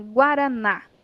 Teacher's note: a última sílaba é a mais forte · é uma palavra oxítona é aquela que a última sílaba é forte é tônica